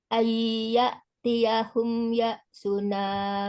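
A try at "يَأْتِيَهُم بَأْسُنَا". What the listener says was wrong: Sukun ketemu dengan ba itu ada irfa safawi bukan ya ya. Ayyatiyahum ba'suna.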